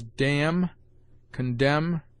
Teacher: N is sometimes mute after M